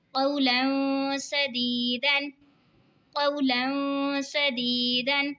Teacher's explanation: دو زبر کی تنوین کے بعد حروف اقفا کا سین آ رہا ہے تو اقفا ہوگا یعنی گنہ کر کے پڑھیں گے